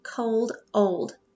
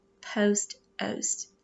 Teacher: this is a closed syllable but it doesn't make that short sound for the vowel it makes a long vowel sound